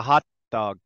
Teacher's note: I make the shape of the T, but I don't say it. But I do say the D.